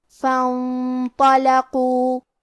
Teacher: قاف کی ادائیگی زبان کے جڑ اور تالو کے نرم حصے سے ہے. قاف بھی حروف تفخیم میں سے ہے لہذا ہمیں قاف کو موٹی آواز میں پڑھنا ہے.